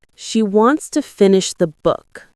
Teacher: Stress wants and book and let to finish the be soft and fast.